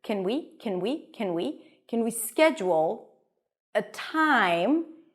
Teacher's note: The T is aspirated, so it feels like there is a little H here.